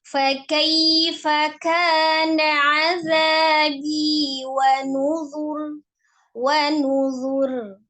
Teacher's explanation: Alirkan huruf ro-nya karena huruf ro memiliki sifat antara siddah dengan roghah